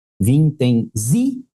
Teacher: Ela é paroxítona, porque o zi é mais forte, mas ela tem uma sílaba subtônica que a gente chama.